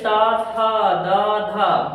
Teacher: जैसे ता था दा धा बोलते हैं तो उच्चारण करते समय जो हमारी जिह्वा होती है वो दांत को टच करती है, इसीलिए हम क्या कहते हैं, इसे दंत वर्ण को बोलते हैं।